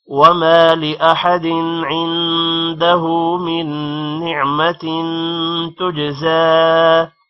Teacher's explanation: لأحد دن پر اگر آگے حروف حلقی نہ آ رہا ہوتا تو غنہ ہوتا، لیکن حروف حلقی کی وجہ سے غنہ نہیں ہوگا ، عندہ نون پر غنہ ہوگا اور ہا پہ الٹا پیش · من نعمت نون پر غنہ ہوگا اور تین پر بھی غنہ ہوگا · عندہ نون پر غنہ ہوگا اور ہا پہ الٹا پیش ہے تھوڑا سا لمبا کریں گے